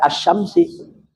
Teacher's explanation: lam sukunnya masuk ke dalam huruf syin makanya disebut idgham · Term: idgham Syamsi, idgham syamsi